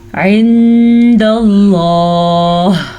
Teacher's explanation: لفظ اللہ کو پر پڑھنا ہے اور اخفا بھی کرنا ہے، عین کے مخرج کا بھی دھیان رکھنا ہے، واضح کر کے پڑھنا ہے.